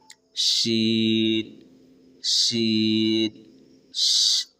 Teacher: زبان کے دونوں سائڈ آپ کے تالو میں سٹیں گے اور زبان کے بیچ سے آواز نکالتے ہوئے شین ادا ہو جائیں گے